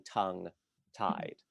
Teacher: it really reasserts a kind of prosodic emphasis to each of these 2 syllables